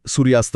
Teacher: तयार करते शब्द बनतो सूर्यास्त. अरे वाह म्हणजे सूर्य अस्त असं मध्ये न थांबता आपण पाण्याच्या प्रवाहासारखं सलग सूर्यास्त म्हणतो